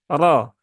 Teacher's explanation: Kemudian roknya dia berbaris fathah, maka roknya dibaca dengan tebal ya. Roknya dibaca dengan tebal.